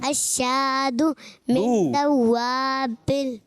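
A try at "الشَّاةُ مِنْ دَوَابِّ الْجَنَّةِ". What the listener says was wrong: غلط ہو رہا ہے، دو تھوڑی ہے، تو ہے. تو الشاتو. تو دوابل نہیں ہے، دوابل ہے. باپ پہ لیکن تشدید ہے. دوابل.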